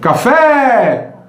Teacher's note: O E alonga, né? Então é a sílaba tônica.